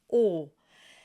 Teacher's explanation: This is a closed, long O.